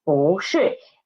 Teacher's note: 不 changed its pronunciation, changed its tone into second tone. So it becomes 不是.